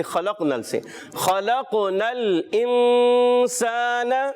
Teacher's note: خا پیارے بچوں حرف مستعلیہ میں سے موٹا ادا کریں گے